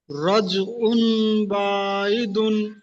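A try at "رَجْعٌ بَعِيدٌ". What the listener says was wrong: বাটা টান হবে না ভাই, আইনটা টান হবে। পড়েন। রজউম বাঈদুম।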